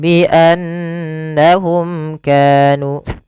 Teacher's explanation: lafal nun berharakat tasydid kita baca dengan bacaan gunnah, memasukkan suara nunnya ke rongga hidung kita dan ditahan